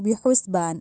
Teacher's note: अब हा जो है उसको हलक से निकालना है, बेहुस नहीं कहना, बेहुस, ठीक है।